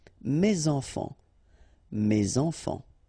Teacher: So in that case, my children, so it should be at the plural because this children is at the plural, okay, so it goes like that, and then ending with s. Enfant, children is starting with a vowel, so you should make the liaison